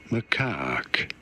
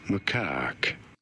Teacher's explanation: You do want to stress on the second syllable, on the caque syllable.